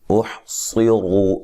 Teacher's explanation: صاد کو بھی موٹا، را کو بھی موٹا، را کے اوپر پیش ہے اس وجہ سے را کو موٹا ادا کریں گے